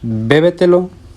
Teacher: sílaba tónica se encuentra antes de la antepenúltima sílaba de la palabra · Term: sobresdrújula